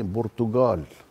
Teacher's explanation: القاف المعقودة اللي هي القاف ينطقها كانها جه برتغال مثلا